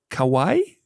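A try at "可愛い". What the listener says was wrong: It's 3 syllables. Kawaii. Kawaii.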